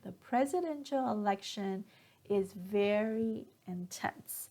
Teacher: So notice here that when I stressed on the word very, my pitch goes up.